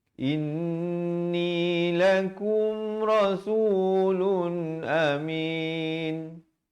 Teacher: inni, 2 harakat wajibul ghunnah